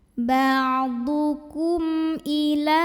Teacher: Kebetulan hurufnya adalah huruf hamzah. Maka mim sukun dibunyikan dengan izhar atau jelas bunyi M-nya tidak perlu ditahan. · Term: izhar syafawi